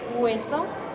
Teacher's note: los labios se aproximan más entre sí y la lengua se acerca más al velo paladar